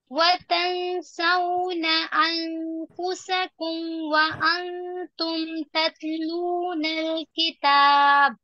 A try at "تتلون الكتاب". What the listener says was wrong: تا کو ہلائیے نہیں. تتلون الکتاب. وقفاً با میں قلقلہ. کتاب.